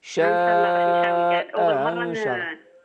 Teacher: شاء أنشره يعني ننطق بهمزتين إحداهما محققة والأخرى مسهلة بين بين